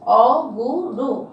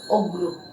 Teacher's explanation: মাঝখানে একটা উ বাদ পড়ে গেছে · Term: মধ্যস্বর লোপ